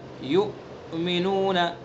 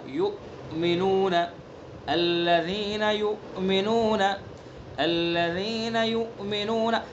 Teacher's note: حمزہ کے اندر جھٹکا لگائیں گے، اس کی صفات، اس میں شدت ہے، اس میں جہر ہے، ان تمام صفات کا خیال کرنا ہے، ٹھیک ہے، یعنی اس کو ادا کرتے وقت سانس ایک دم بند ہوگا۔